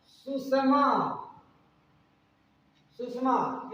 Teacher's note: दंत सा का मूर्धन्य सा में बदल जाएगा तो हो जाएगा सुषमा, सुषमा।